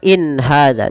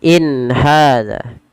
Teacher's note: Tidak ada penahanan in ya, tapi dia jelas saja. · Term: izhar halqi